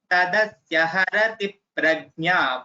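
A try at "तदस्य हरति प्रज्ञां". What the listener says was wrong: Tadasya harati prajnam. Anuswara.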